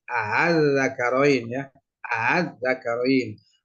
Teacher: pasti ya karena harakat sebelumnya berupa fathah maka diganti dengan Alif dibaca tahsil yaitu dengan menyuarakan antara Hamzah dan Alif